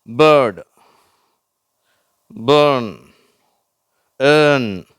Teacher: கடைசியில வர ஆர் என்ற எழுத்தை ஆங்கிலேயர்கள் உச்சரிப்பதில்லை. அமெரிக்கர்கள் வந்து ழ் அப்படின்னு உச்சரிப்பாங்க.